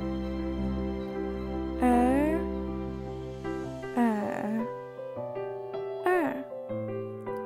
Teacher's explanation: This sound is similar to the er sound in the English word church, but your mouth is opening wider when you say the Chinese pinyin er